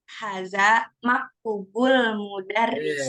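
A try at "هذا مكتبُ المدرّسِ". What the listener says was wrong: Itu masih maktub itu, masih itu. Diulang.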